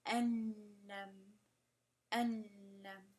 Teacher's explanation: The ones that do not have ghunna are ra and lam. And for those two, for those examples, you will barely hear the noon.